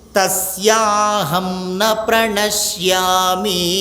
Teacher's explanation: న అంతే హ్రస్వము కదా దీర్ఘం లేదు దీర్ఘం లాగా పలుకుతున్నారు